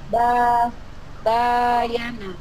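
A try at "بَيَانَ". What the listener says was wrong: baya, jangan boyo. Baya tipis bayana. Putus-putus nggak apa-apa ya, yang penting benar panjang pendeknya.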